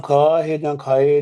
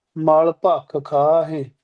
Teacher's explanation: ਹਾਹੇ ਸਿਹਾਰੀ ਤੇ ਬਿੰਦੀ ਲਾ ਕੇ ਆਪਾਂ ਨਾਸਕੀ ਉਚਾਰਨ ਕਰਾਂਗੇ